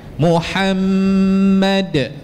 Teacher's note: bila kita berhenti pula ada qalqalahnya